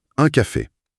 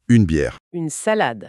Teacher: Alors que la physiologie du une féminin, elle est hyper différente. Le son se déploie, l'air sort par la bouche et la langue vient vraiment claquer le haut du palais pour faire sonner le N.